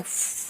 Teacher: फ यानी हवा निकल रहा है दोनों होठ के बीच में से चिपक नहीं रहा है